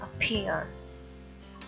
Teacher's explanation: अपीयर में देखें आ की जो साउंड है उस पर स्ट्रेस नहीं है, जो जोर पड़ रहा है और जो थोड़ी सी लाउड साउंड है वो पी की है इसमें।